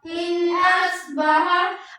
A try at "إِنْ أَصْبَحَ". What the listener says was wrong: اس میں سین کی آواز آ رہی ہے، یہاں پہ سین کی آواز یہاں پہ نہیں آنی چاہیے.